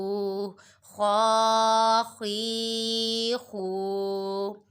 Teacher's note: خو کھرا زبر خو، خو کھرا زیر خوی، خو الٹا پیش خو، خو خی خو. خو حروف مستعالیہ میں سے ہے، اسے پر ادا کریں گے